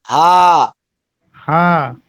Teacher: ये हा हलक से नहीं है। बस सीने की तरफ से हल्का सा कहेंगे।